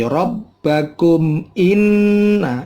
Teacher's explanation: Bunyi mim matinya jangan lama, tetapi langsung begitu 2 bibir ketemu, langsung lepas lagi rabbakum inna. Nunnya bertasydid. Nun bertasydid namanya gunna. Boleh lebih dari 2 ketuk.